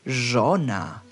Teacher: retroflex consonants your tongue rolls backwards